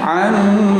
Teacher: Nun tasdid, mim tasdid dibaca dengung 1/2 alif, namanya gunnah. Jangan langsung gunnah, dipraktekkan gunnah, didengungkan.